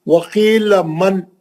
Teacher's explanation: آپ نون کے اخفا کی آواز میں کیوں چلے گئے؟ اظہار سے پڑھنا ہے